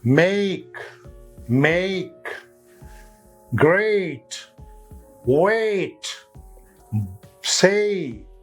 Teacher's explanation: a sound and e sound coming together in a single syllable of a word